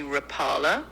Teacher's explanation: The original Finnish pronunciation is something like rapala with the emphasis on the first syllable, but a lot of people, especially in the US, say rapala with the emphasis on the second syllable. You might also hear some variations in between, but those are the main ones.